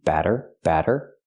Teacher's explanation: use a short a sound like black cat plus the fast D